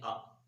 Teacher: پہلے تو حمزے کی انتہائی حلق سے اس کی آواز نکالنی ہے، آ، جلدی سے آ، اور آخر میں اپنے اوپر کے دانتوں کو نچلے ہونٹوں پر رکھ کر اس کو مکمل کرنا ہے۔